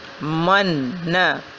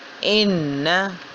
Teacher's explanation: یہاں پہ ہم یہ چیز سیکھتے چلیں کہ حروف غنہ 2 ہیں، نون اور میم، اور یہ نون اور میم پر جب شد آ جائے تو ان کی ادائیگی میں غنہ پیدا ہو جاتا ہے، یعنی نون اور میم کی آواز کو ناک میں ایک الف کے برابر روک کر رکھنا